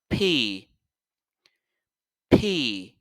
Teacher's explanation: l'air va sortir par force. C'est comme si c'était quelque chose qui explosait.